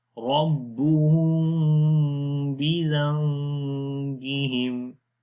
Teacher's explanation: we make ghunna and we long 1 second